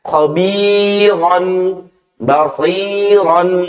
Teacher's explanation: Contohnya khabiron, basiron, ro-nya itu dibaca tebal. Ketika dia fathah atau fathatain, maka ro ini dibaca tafkhim.